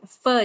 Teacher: ऊपर के जो दांत हैं वो अंदर से आपके नीचे वाले हंठ को टच होंगे।